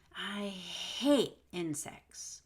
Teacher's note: if you really want to emphasize the word hate, you might just do a held T